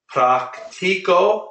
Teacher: I'm putting the stress on the second to last syllable